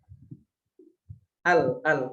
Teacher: Kan ketika kita mengucapkan huruf lam, al, itu ujung lidah, sisi ujung lidah itu terangkat menempel ke gusi atau menempel ke langit-langit mulut. Jadi udara yang keluar dari tenggorokan itu nggak bisa terus, jadi berbelok lewat sisi lidah gitu. Al. Jadi keluarnya lewat ujung sisi lidah. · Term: Inhiraf